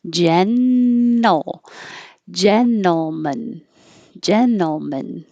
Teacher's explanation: This is a combination NTL where you don't have to pronounce the T. Your tongue is already in the N position.